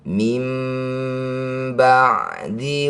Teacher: Iqlab artinya menukar. Bunyi nun sukun kita tukar dengan mim. Rapatkan bibir. Dengungkan dua harakat. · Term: iklab